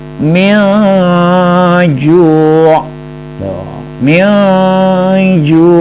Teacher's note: ingat bunyi dengungnya sedikit samar, berarti apa? Ikhfa. Nun sukun bertemu dengan jim.